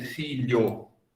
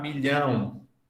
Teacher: O que acontece com L é que ele palataliza o L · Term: palatalização